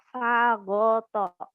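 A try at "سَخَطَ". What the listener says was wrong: Sakho. Bukan go itu.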